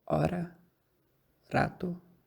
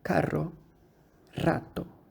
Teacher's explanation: Os sons róticos são o tepe, ra, como em hora, rato, e a vibrante múltipla ra, como em carro, rato